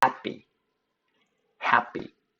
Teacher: 이것을 경음화라고 합니다. 경음화, 된소리 현상이에요. 그래서 프가 아니라 뿌 사운드로 발음이 됩니다. happy라고 발음하는 미국 사람들은 거의 없어요.